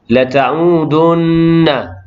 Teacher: nun yang bertasydid, hukum dia wajibul ghunnah, wajib dengung sekadar 2 harakat.